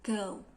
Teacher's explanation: The most important thing to remember about diphthong is the first part of the sound takes much longer and stronger than the second part